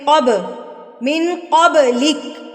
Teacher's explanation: با ہلائیں گے کیونکہ یہ حروف قلقلہ میں سے ہے. من قبلک، قاف طا با جیم دال جب سکون کی حالت میں آ جاتے ہیں یا وقف کی حالت میں ہوتے ہیں تو ان کو ہم ہلا کے پڑھتے ہیں.